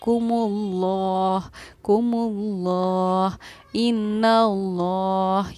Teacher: यहाँ देखिए, लफ्ज़ अल्लाह के लाम से पहले क्योंकि पेश था और लफ्ज़ अल्लाह के लाम से पहले ज़बरिया पेश हो, तो लफ्ज़ अल्लाह के लाम को हम पुर यानी कि मोटा पढ़ते हैं, इसलिए हमने पढ़ा है कुमुल्लाह कुमुल्लाह इन्नल्लाह।